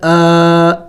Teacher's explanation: کڑی زبر کو بھی ایک الف کا مقدار کھینچنا ہوتا ہے، لمبا کرنا ہوتا ہے